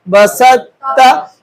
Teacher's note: با زبر با, سین طا تا زبر ست, بست تا زبر تا, بست تا, بیچ میں سے طا سکپ ہو گیا, اس کو ہم نے نہیں لیا